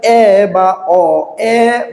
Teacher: উচ্চারণ যখন করেন তখন দেখেন জিহ্বা আ উচ্চারণের থেকে একটু উপরে গেছে। যেমন যেমন আপনি উচ্চারণ করে দেখেন এ অ আ এর চাইতে একটু উপরে না, তাই এটাকে বলা হচ্ছে নিম্ন মধ্য স্বরধ্বনি।